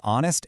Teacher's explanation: honest starts with a consonant letter, sure, but the H is completely silent, leaving us with an O vowel sound